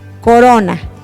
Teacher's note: Corona tiene su sílaba tónica en ro y la vocal tónica es la o